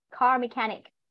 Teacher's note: Nhớ trọng âm vào mechanic con nhá. Trọng âm vào âm tiết số 2. Car mechanic.